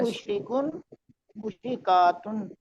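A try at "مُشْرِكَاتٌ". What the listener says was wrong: بہت کا لمبا نہیں کریں گے، الف نہیں ہے ساتھ، ٹھیک ہے، زبر ہے، کافراتن، ابھی ہم دیکھیں گے جب جمع آئے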